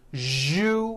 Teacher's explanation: That second syllable, ju, the one with the underline, needs to be voiced. Put your hand on your throat and feel for the vibration in the second syllable.